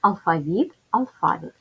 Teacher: в українській мові це слово має подвійний наголос